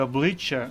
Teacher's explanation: звук ч пом'якшений і подовжений а буква я позначає звук а і м'якість попереднього приголосного